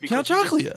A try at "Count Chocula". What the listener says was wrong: He's not even saying it right. He's saying chocolate.